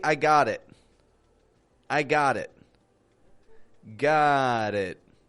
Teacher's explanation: a word ending in a t and another word linking to that using a flap T to link the two